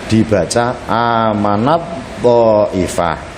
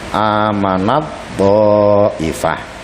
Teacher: Contohnya tertulis amanat thaifatin, amanat ta'ifah dibaca amanat ta'ifah. Taknya diganti menjadi tok sehingga tok dibaca seperti bertasydid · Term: idgham mutajanisain